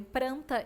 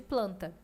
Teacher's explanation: as características preservadas do português como a troca do L pelo R resultando em Pranta em vez de planta